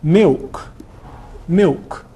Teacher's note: in London you get L vocalization which will turn milk into milk milk whenever L is dark in RP it tends to turn into a vowel